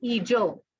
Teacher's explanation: In Sri Lanka, we have the long vowel word initially